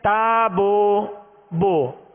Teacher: ہم نے ہونٹوں کو کامل گول نہیں کیا پیش کی ادائیگی میں، کچھ کھلا رکھا، تو اب یہ مجہول طریقہ بن گیا. تابو یہ غلط طریقہ ہے.